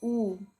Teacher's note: मतलब हर तरह की आवृत्ति हो रही है हमसे, खुल भी रहा है, बंद भी हो रहा है। और वृत्तमुखी मतलब गोल हो जा रहा है पूरा मुंह